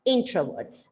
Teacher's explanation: the syllable stress is on the first part